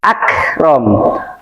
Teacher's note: kaf ini namanya huruf sifatnya hames. Hames itu berdesis